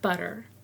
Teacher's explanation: T between 2 vowels is a D sound. Butter sounds like butter.